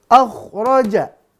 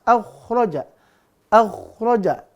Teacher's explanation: Pastikan kha-nya keluar dari tenggorokan atas.